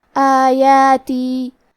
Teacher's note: کلمت آیاتی میں الف پہ کھڑا زبر ہے اور یا پہ بھی کھڑا زبر ہے، یہ دونوں مد الف ہے، تو ہم یہ دونوں مد کو برابر سے ادا کریں گے